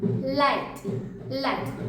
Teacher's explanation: when we say L sound, our tongue touches the roof of the mouth, the front part.